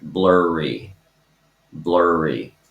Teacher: Okay, where you have blur, the vowel is still an R, but then the second R is the consonant, blurry, blurry.